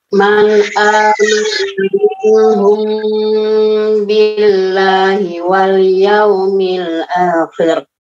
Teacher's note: Ada mim sukun bertemu dengan ba. Ditahan.